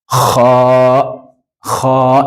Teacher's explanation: we have what we call ha, which comes from the top part of your throat